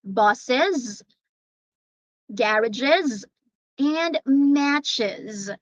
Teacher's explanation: we pronounce the plural forms with e and z